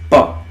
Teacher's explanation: प प ओठ टकरा रहे आपके इनके उच्चारण में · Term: ओष्ठ